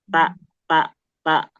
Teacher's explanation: Bukan di ujungnya bukan ta. Tapi di akarnya ta.